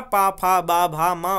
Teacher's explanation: ओष्ठ्य व्यंजन में है जिन व्यंजनों के उच्चारण में दोनों ओष्ठ द्वारा श्वास के अवरोध होता है, ओष्ठ व्यंजन कहलाते हैं